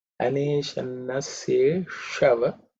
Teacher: Sha again is the tongue raised up, cerebral.